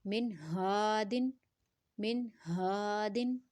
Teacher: نون ساکنہ اور تنوین کے بعد اگر اظہار لیٹر آئے گا یعنی حلقی لیٹر آئے گا تو اظہار کریں گے، اور اخفا والے لیٹرز میں سے آئے گا تو پھر ہم اخفا کریں گے یعنی غنہ کریں گے۔ اور یہاں ہمارے پاس نون ساکنہ کے بعد ہا ہے، حلقی لیٹر ہے، تو ہم نے اظہار کرنا ہے۔